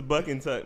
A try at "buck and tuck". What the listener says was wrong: You said buck and tuck. It sounded like you said butt and tuck.